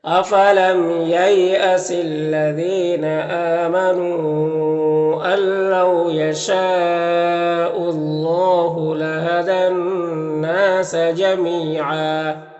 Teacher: یہاں پر دو زبر ہے تو وقف کی صورت میں ایک زبر کے ساتھ الف پڑھیں گے